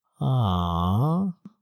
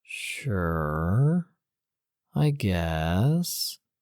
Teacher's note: Now, the third is unsure. Ah, you're falling down and then rising back up